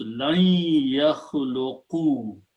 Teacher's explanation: lan and ya, when they come together, they go into the idgham, and you pronounce lan yakhluqu.